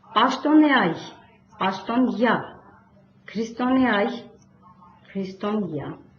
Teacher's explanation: Ե այ եռաբարբառը բառավերջում արտասանվում է յա